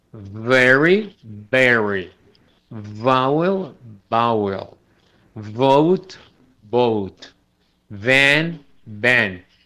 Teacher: La V se pronuncia pues poniendo los labios sobre los dientes superiores sobre el labio inferior y produciendo una vibración.